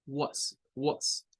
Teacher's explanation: Como si se tratase de una W y una schwa